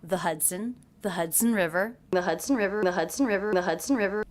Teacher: The word the pronounced with the schwa, sometimes it's pronounced with an E vowel.